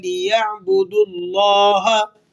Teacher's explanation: لیعبدوا اللہ، آپ نے یہاں پر لی، لام زیر لی پڑھنا ہے، لام زیر لے نہیں پڑھنا۔ لفظ اللہ کو پر کر کے ادا کریں گے۔ لیعبدوا اللہ، لفظ اللہ پر ہوگا، اس سے پہلے پیش ہے دال پر۔